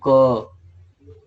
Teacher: स्वर तंत्र जहां पर है गले के अंदर, वहां पे कंपन हुआ क्या, नहीं हुआ। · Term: अघोष